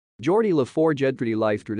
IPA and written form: ˈdʒɔːrdi ləˈfɔːrdʒ (Geordi La Forge)